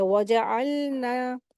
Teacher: इसके ऊपर हरकत लगी हुई है। अलना, आइन का ऐन हुरूफ़ हल्क़ी, इसको हलक से अदा करेंगे